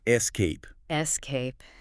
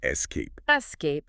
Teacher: It feels very natural when you put the weight on the back half of the word.